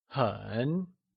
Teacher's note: Very translates to 很 and is also pronounced using a falling, rising tone